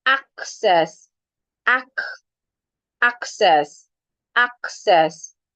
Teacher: the first C sounds like a K, and the second C sounds like a S